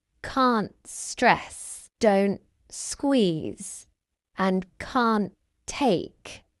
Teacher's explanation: Did you notice how I dropped the t sound in the negative contractions?